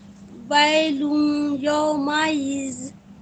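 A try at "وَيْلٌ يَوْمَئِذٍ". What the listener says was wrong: ہاں یومئذ ویلن ہے نا. ویلن تھوڑا ادغام کر کے غنہ بھی کریں اور رکے بھی تھوڑا دیر نا. 2 کاؤنٹ غنہ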